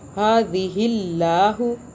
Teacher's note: हा को खींच लेंगे क्योंकि खड़ा ज़बर आ रहा है। हादिहिल्लाहु, अल्लाह बारीक हो रहा है क्योंकि अल्लाह से पहले ज़ेर आ रहा है। · अल्लाह बारीक हो रहा है क्योंकि अल्लाह से पहले ज़ेर आ रहा है। हादिहिल्लाहु, अल्लाह को खींच रहे हैं क्योंकि अल्लाह को खींचते हैं यहाँ पर।